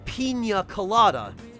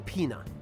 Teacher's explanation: if you put a tilde above the N it makes it turns the N into like an ny sound